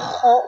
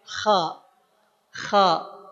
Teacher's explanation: Ist'a diangkat pangkal lidah kita sehingga suaranya jadi tebal. Huruf k bukan karena ko monyong ko di kanan tapi karena k yang kemudian pangkal lidahnya diangkat